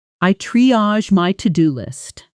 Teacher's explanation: Try that sentence, feeling how it stresses, tri-age, with the stress firmly on the first syllable